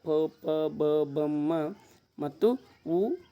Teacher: ತುಟಿ ತುಟಿಗಳ ಸಹಾಯದಿಂದ ಹುಟ್ಟುವ ಅಕ್ಷರಗಳಿಗೆ ಓಷ್ಟ್ಯಾಕ್ಷರಗಳು ಅಂತ ಕರೀತೀವಿ